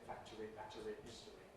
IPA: ˈfæktəri, ˈbætəri, ˈhɪstəri